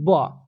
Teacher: जब ब बोलते हैं तो आपका दोनों लिप्स क्या होता है, एक साथ मिल जाते हैं